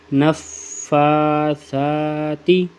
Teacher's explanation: سا میں کیا اوپر اور نیچے والے دانت کے درمیان زبان آ جاتی ہے تو یہ سا پڑھا جاتا ہے